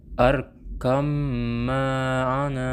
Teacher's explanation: Cara membacanya dengan memasukkan atau mentasjidkan huruf pertama pada huruf yang kedua. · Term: idgham mutaqaribain